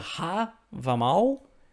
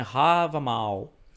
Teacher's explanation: esse primeiro A, assim como o último, eles são um pouquinho mais alongados. Imagina que ele, em vez de o tempo normal dele, se fosse 1, ele seria 1.25, tá?